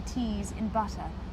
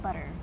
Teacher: the consonants are generally crisp and clean for example you pronounce the t's in butter rather than making them DS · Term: standard British